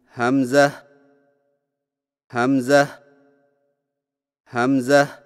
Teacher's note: حمزہ کی ادائیگی میں ہا کو بغیر کھینچے میم کے ساتھ ملائیں اور میم میں آواز کو لمبا نہ کریں